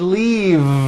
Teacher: no it's not leaf with an unvoiced F I should have said leave with a voiced V sound